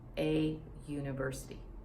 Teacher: it's not making the vowel sound ah okay it is making a y sound consonant